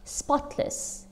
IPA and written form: ˈspɑːtləs (spotless)